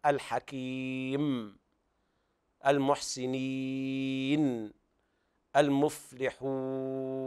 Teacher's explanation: لابد من بيان النون الموقوف عليها أو الميم الموقوف عليها في أصل الغنة التي ملازمة لها